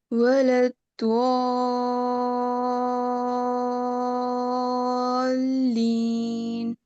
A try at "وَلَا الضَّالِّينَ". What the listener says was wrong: The timing is very good. Now, dua is a problem. Don't say dua or dua. Wow, with a wow. Make it da, da. Back part of the tongue is the makhraj. ٹھیک ہے, جس کو آپ molar سے touch کریں. دا, دا. اور اس کے بعد آپ نے لپس کو راؤنڈ نہیں کرنا. And just keep saying دا, دا, دا.